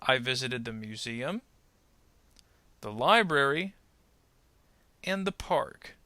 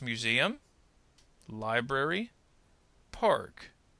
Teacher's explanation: notice how the intonation will rise on the first two words and then fall on the third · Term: series